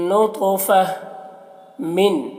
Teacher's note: मीम को इस नून से मिलाकर पढ़ेंगे, ये नून को नहीं पढ़ा जाएगा, नून साकिन को नहीं पढ़ा जाएगा। और नून मुशद्दद है तो गुन्ना करेंगे और तो को मोटा करके पढ़ेंगे और तो में कलकला भी करेंगे। · और नून मुशद्दद है तो गुन्ना करेंगे और तो को मोटा करके पढ़ेंगे और तो में कलकला भी करेंगे। और यहाँ पर तो है वक्फ़ मुतलक की अलामत, यहाँ पर वक्फ़ करेंगे तो ये गोलता हाय साकिना बन जाएगी, तो फ़ह हो जाएगा।